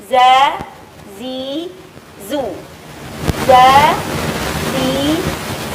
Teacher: tempat keluarnya huruf zai yaitu ujung lidah ada dekat di antara ujung gigi seri atas dan bawah.